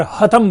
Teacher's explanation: हम जिसे श यानी तालव्य श कह रहे हैं, यही ध्वनि जब असम प्रदेश में जाती है तो वह ध्वनि वहां पर ह हो जाती है, और शतम जो है वो वहां पर हतम बन जाता है।